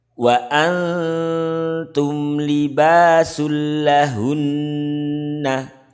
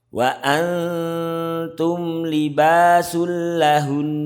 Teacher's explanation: Kita harus menampakkan taknya karena nun ini berdekatan sekali dengan makhraj ta. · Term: ikhfa hakiki